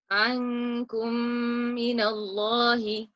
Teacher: We blended the Meem Sakin with the Meem Shadda. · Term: idgham